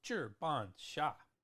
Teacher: all fourth tones in the Chinese there